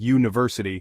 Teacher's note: it starts with u a vowel but it sounds like University that u sound is actually more like a consonant